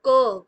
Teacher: क गले से आवाज आती है